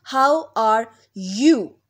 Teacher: So in U sound there is Y sound which is presented by J sound and long U sound.